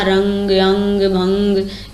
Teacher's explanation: अनुस्वार क्या होते हैं? अनुस्वार, इनका उच्चारण केवल नासिका से किया जाता है। केवल नाक के द्वारा इनका उच्चारण किया जाता है।